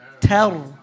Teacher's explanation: Ta is light. Ra is heavy. Tar. Keep saying tar, not tar.